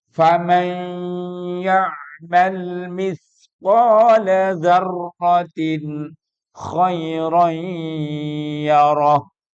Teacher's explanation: Memasukkan nun ke ya, tapi dengan bacaan gunnah. Harus ditahan.